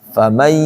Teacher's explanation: Pastikan saat kita bilang, di sini ada kalimat faman yahdihi, bacanya famai, masuk ke hidung. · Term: idgham bigunnah